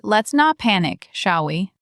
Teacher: That's the let's structure, falling tone, taking control.